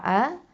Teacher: இந்த ஹம்சா எங்கேருந்து வரணும், அகசல் ஹல்குலேருந்து வரணும், அதாவது கீழ் தொண்டையிலேருந்து வரணும்.